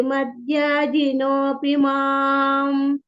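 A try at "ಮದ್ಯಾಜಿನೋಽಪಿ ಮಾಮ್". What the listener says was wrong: ಮಮ ಹೇಳಿರಿ ಮತ್ತೆ ಮುಂದೆ ಹೇಳಂಗಿಲ್ಲ ಮಾಮ ಅಷ್ಟೇ ಮ ವ್ಯಂಜನ ಇದೆಲ್ಲ ಮತ್ತೆ ಉಳಿದಿದೆಲ್ಲ ಚೆನ್ನಾಗಿ ಬಂತು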